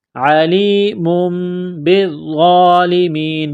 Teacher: تنوین کے بعد با ہے تو یہاں پر غنہ کریں گے، آواز ناک میں چھپائیں گے